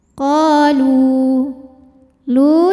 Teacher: sebab ada wau sukun yang sebelumnya didahului baris damah maka huruf lam kita panjangkan dua harakat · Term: mad tabi'i zahiri